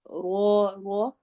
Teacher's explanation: رو کو ہیوی موٹا پڑھیں گے کیونکہ رو کے اوپر زبر آ رہی ہے، فتحہ آ رہی ہے، اور اب رو لمبا ہوگا چونکہ الف مدہ ہے، الف سے پہلے فتحہ آ رہی ہے۔